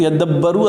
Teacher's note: کی آیت ہے بیٹا، کہتے ہیں یدبروا اصل میں تھا یتدبروا، تا کو دال میں تبدیل کیا پھر دال کو دال میں ادغام کر دیا